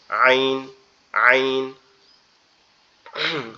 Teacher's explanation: এটার উচ্চারণটা হচ্ছে আমাদের এই গলার যে মধ্যখান আছে, কণ্ঠনালীর মধ্যখান, একটু চাপা আওয়াজে, কণ্ঠনালীর মধ্যখান থেকে একটু চাপা আওয়াজে আওয়াজ হবে